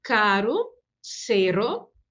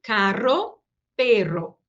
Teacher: Então, observem que o primeiro é vibrante mais suave e o segundo é vibrante e forte